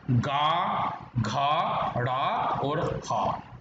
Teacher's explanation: घोष वर्ण बताइए जो कि कंठ से उच्चारित होते हैं